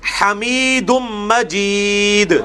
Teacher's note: دال پہ قلقلہ بھی ہوگا اور یہ حمید بھی ہا دوسرے والی ہے